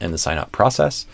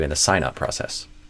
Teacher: I would probably stress sign up more than process